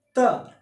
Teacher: हमारी जो जीभ है यानी जो हमारी जिह्वा है, यह हमारे दांतों को स्पर्श कर रही है।